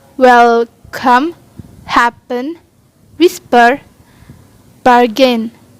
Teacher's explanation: english words that have the two syllables but the stress is placed on the first syllable